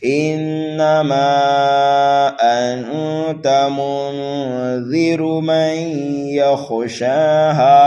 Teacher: مد منفصل ہوگا، 2.5 الف کے برابر میم کو کھینچ کر کے پڑھیں گے · نون مشدد ہے، گنہ کر کے پڑھنا ہے